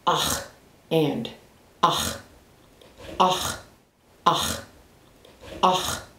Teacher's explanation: The next consonant is the Q. The Q sounds like a clearing in the back of the throat or a rolling H, kind of like the word Bach, like the composer, Bach.